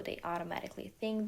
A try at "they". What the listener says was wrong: Okay, and then there on that th, I'm hearing day, day. But we want they. So tongue between the teeth.